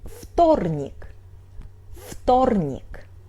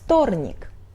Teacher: В is voiced but it's before Т, so we pronunciate it like Ф